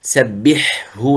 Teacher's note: سبحه لا، الحاء والهاء المخرج مختلف، ليس متجانس وليس متقارب، فالحاء من وسط الحلق والهاء من أقصى الحلق